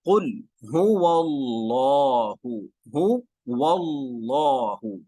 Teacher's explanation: جی اب ہم چلتے ہیں، قل هو اللہ، هو اللہ، موٹا، لفظ اللہ موٹا کیوں؟ اس لیے کہ لفظ اللہ سے پہلے زبر ہے